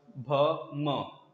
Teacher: दोनों ऊपर नीचे का जो ओठ है आपका, दोनों सटेंगे आपस में, या फिर दोनों में से कोई एक थोड़ा सा भी ऊपर नीचे होगा, ओठ हिलना चाहिए बस। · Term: ओष्ठ व्यंजन